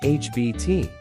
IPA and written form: ˈhæbɪt (habit)